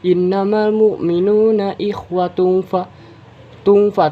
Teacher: Innamal mu'minuna ikhwatun fa terdapat hukum bacaan ikhfa hakiki, yaitu karena terdapat huruf dhammah tanwin yang bertemu dengan huruf fa, yaitu salah satu huruf ikhfa. Cara bacanya disamarkan dan didengungkan